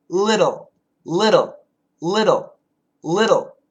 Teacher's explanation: it's a flap T sound with a dark L.